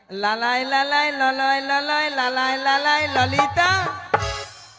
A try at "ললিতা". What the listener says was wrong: ওটা লালাই লালাইও নয়, আর ললয় ললয়ও নয়। বলো ললিতা। বলো ললিতা, ভালো করে উচ্চারণ করতে পারছো না?